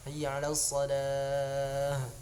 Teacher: hanya tamarbutoh, hanya kalau matinya menjadi ha yang pangkal tenggorokan ya. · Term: ha pangkal tenggorokan